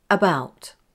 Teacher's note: did you notice that I pronounced the A as the schwa sound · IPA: ə